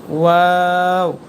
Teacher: দুই ঠোট গোল করে ওয়া উচ্চারণ করতে হয়